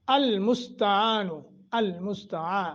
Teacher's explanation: عین ہے اور عین کے اوپر جو آگے الف ہے، 1 سیکنڈ کی مد کریں گے